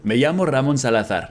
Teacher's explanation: he should have pronounced his name Salazar with a Spanish zeta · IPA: /salaˈθaɾ/